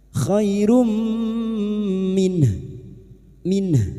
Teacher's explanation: sukun kita lunakkan huruf lin khairum dumatanwin atau dumatain bertemu mim idgham bighunah masuk dengan mendengung masuk pada huruf mim dan mendengung selama tiga harakat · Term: idgham bi gunnah